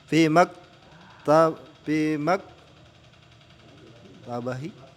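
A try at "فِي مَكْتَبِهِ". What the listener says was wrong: Perhatikan. Bukan maktabatun itu. Tidak ada tamar butohnya. Tidak ada tamar butoh. Hati-hati, bukan maktabah itu.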